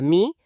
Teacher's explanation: en la boca sí que hay un cierre, con los labios para la mi, por eso es bilabial